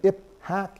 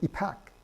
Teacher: when you have an H after a so-called stop sound or a consonant like a P, the P gets aspirated. So instead of saying ip, hak, you say ipak.